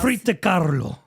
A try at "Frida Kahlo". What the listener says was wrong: singing it. Don't roll it. Frida.